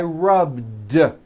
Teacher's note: All I did was add a voiced D sound at the end. Rubbed. It's not rubbed with an unvoiced T.